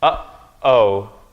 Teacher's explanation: What it means is that it's stopping. You're stopping at the place of your vocal cords. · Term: glottal stop